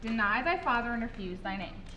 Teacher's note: a 10 syllable line following the pattern of an unstressed syllable followed by a stressed syllable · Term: iambic pentameter